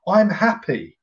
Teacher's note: voice automatically would go up i'm happy did you see that my voice doesn't actually go louder but the tone goes higher